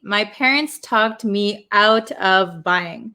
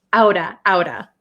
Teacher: becomes a flap t it is between two vowels